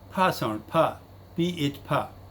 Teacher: it is bilabial and it is voiceless aspirated. Voiceless as well as aspirated.